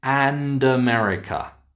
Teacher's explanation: we move the D actually into the next word and make it and America. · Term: connected speech